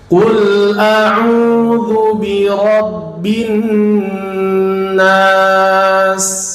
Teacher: huruf qafnya mesti dimonyongkan bibirnya ya, karena harokatnya dhammah namanya ya, jadi mesti dimonyongkan.